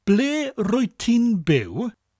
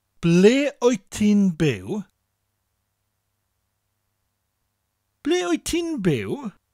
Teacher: Dropping the R on rwyt in conversation.